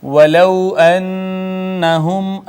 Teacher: نون مشدد پہ غنہ کریں گے، میم ساکن پہ اظہار شفوی ہوگا